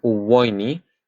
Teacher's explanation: you are following the rule of having that W placed before the vowel